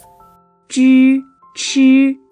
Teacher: For these sounds, the tongue curves up toward the hard palate. For Zh and Ch, the tongue touches the hard palate to form a curve.